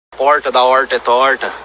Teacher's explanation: esse é o r retroflexo o popular r caipira